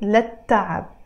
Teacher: Again, here I am pronouncing it للتعب, but in Arabic it's written للتعب. Again, because the ت is a sun letter, we don't pronounce the ل, the second ل here